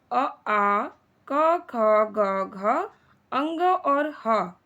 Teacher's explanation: कंठस्थ विसर्ग, कंठ और जीभ का निचला भाग, ये कंठस्थ कहलाता है